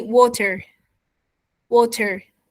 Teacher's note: it sounds something like D and R between two vowel sounds